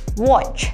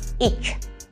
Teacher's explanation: Nah ini bunyi T-nya nggak usah dibaca, jadi langsung aja ke bunyi C. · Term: silent T